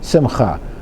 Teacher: You hear the guttural sound with a Het